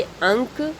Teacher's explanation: इसमें ध्वनि नाक से निकलती है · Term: अनुस्वार